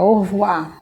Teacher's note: a gente puxa o r gutural aqui na nossa garganta